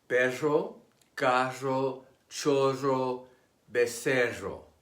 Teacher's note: The double R, once a separate letter of the Spanish alphabet, is trilled more forcefully than a single R.